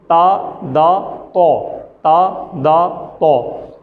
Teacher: تو اس کی ادائیگی کا طریقہ یہ ہے کہ ہماری زبان کی نوک ہمارے سامنے والے جو 2 دانت ہیں بڑے، ان کے اندر والی سائڈ پہ اوپر جڑ میں لگتی ہے